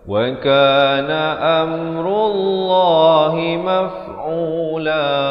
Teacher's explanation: Lafz jalalah ini dibacakan dengan tebal 2 harakat